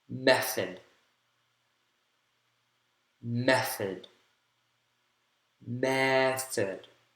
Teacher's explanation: first syllable has primary stress